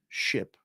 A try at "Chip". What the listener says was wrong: But his name is Chip. His name is Chip, not Ship.